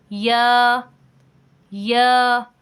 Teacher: حلق سے آواز آئی اور ساتھ ہی نکل گئی، حلق سے آواز آئی اور ساتھ ہی منہ سے نکل گئی، جیسے یا، یہ پیچھے سے حلق سے آواز آئی اور ساتھ ہی منہ سے باہر نکل گئی